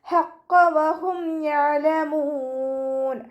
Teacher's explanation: മഖ്റജ് വസത്തുൽ ഹൽക്കാണ്, തൊണ്ടയുടെ മധ്യഭാഗം. ഖാഫ് ഇസ്തിഅലാൻ്റെ ലെറ്ററാണ്, ഉയർത്തിയിട്ട് ഉച്ചരിക്കുക.